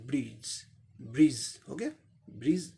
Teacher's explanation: ये ज एस्पिरेटेड ज